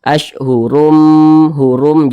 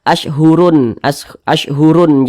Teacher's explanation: Jadi bunyi tanwin ini dia langsung masuk ke huruf mim. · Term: idgham bi gunnah